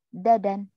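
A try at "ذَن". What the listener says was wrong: Nah ini agak lidahnya kayak dilipat. Zazan. Kalau dadan nggak ada titiknya. Ini zazan.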